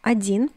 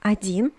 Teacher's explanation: Notice that the first O is read as A